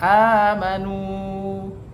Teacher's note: Kemudian hukum tajwid yang kedua adalah amanu, di mana di situ adalah huruf alif amanu bertemu dengan tanda baca fathah yang berdiri atau alifnya ada dua, maka disebutlah dengan mad badal. Panjangnya adalah satu alif atau dua harokat